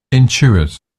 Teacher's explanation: So we sort of do a sort of ch. We Brits do a ch. They don't do a sort of ch at the T sound.